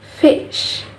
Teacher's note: The next sound is the place of articulation is labiodental. Labiodental is produced when the lower lip touches the upper teeth, and the manner of articulation is fricative. Fricative is when the airflow to the narrow passage and create friction, and this sound is voiceless.